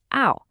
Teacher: You start with O and then you kind of slide into a W sound. Ow. See how your lips start out round and then close up a bit. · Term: glide